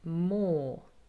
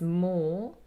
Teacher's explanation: a long O sound, there's no movement in my mouth, it's just O